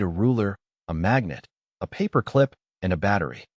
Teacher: rises on each non-final item, ruler, magnet, paperclip to signal more is coming, then falls on the final item to close the list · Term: list inonation